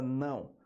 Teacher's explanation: A letra é O, mas o som é de U